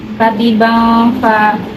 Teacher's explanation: bacaan ikhfa hakiki karena tanwin bertemu dengan huruf fa, dibacanya samar.